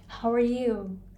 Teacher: so you is much much longer than how and are